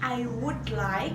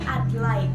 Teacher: seolah-olah would-nya itu hilang karena menjadi I'd like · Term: elision